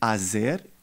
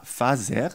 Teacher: la F initiale est abandonnée et il devient un phénomène plus généralisé